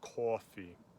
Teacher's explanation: two dots in german and there is ocada which is o it is ah with rounded lips like in northern new jersey pronunciation of coffee